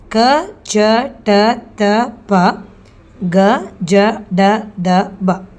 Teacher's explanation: ಕ ಚ ಟ ತ ಪ ಗ ಜ ಡ ದ ಬ ಅಂದರೆ ಇವೆಲ್ಲ ಅಕ್ಷರಗಳನ್ನು ನಾವು ಕಡಿಮೆ ಉಸಿರಿನ ಸಹಾಯದಿಂದ ಉಚ್ಚರಿಸಲಾಗುವಂತಹ ಅಕ್ಷರಗಳು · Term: ಅಲ್ಪಪ್ರಾಣಗಳು